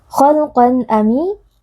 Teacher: tanwin yang bertemu dengan salah satu huruf halq atau tenggerokan yaitu Hamzah cara membacanya adalah membaca bunyi tanwin dengan jelas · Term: izhar halqi